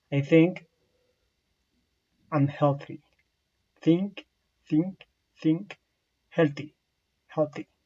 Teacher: The place of articulation is dental. The manner of articulation is fricative. This is a voiceless sound. So it means that your vocal fluids don't vibrate.